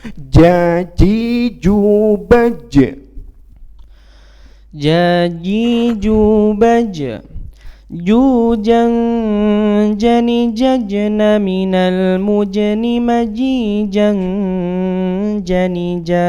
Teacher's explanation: kalau ja itu tengah lidah kita menempel ke langit-langit atas